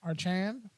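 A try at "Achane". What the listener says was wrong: There is no R.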